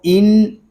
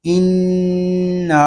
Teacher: نون مشدد میں شروع ہی سے غنہ کریں گے۔ اس کو ان اس طرح نہیں پڑھیں گے بلکہ غنے کے ساتھ پڑھیں گے۔